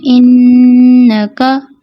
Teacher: نون کو کھینچ دیا جاتا ہے، نون کے زبر کو، جبکہ اس کو کھینچتے نہیں ہیں